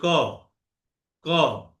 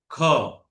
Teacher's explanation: কিন্তু এখানে এখন বলে খ বলেন তো, খ লাগে না বাতাস। এইটা হচ্ছে মহাপ্রাণ ধ্বনি, যেটাতে উচ্চারণ করলে বাতাস লাগে, হাতের মধ্যে ধাক্কা লাগে